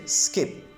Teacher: there is an absence of puff of air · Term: unaspirated